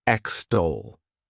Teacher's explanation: The next verb is extol. To extol, this word has 2 syllables, and the stress is on that second syllable